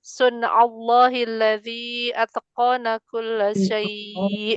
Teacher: Allahi laful jalalah dibaca tafhim karena sebelumnya berharokat fathah